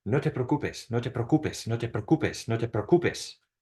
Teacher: the E and the O in preocupes are both strong vowels. And so they separate into two distinct syllables, okay? It's it is going to be preocupes, okay?